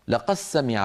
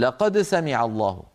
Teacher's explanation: فيدغمون الدال في السين